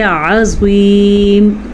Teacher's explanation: عظیم میں عین بولنا ہے اور زوا کو پر بولنا ہے۔ عین بولنے کا مطلب یہ ہے کہ کہیں آپ اس کو عظیم تو نہیں پڑھ رہے۔